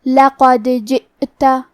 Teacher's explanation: کلمت لقد میں آخر میں دال پہ جزم ہے. ہمیں حرف دال کو قلقلہ سے پڑھنا ہے اور قلقلہ کا معنی ہے حرف ساکن کو ہلانا. تو ہم حرف دال کو ہلاتے ہوئے یہ کلمہ کو پڑھیں گے. · ہم حمزہ کو ظاہر کریں گے اور حمزہ کی ادائیگی حلق کے نیچے والے حصے سے ہے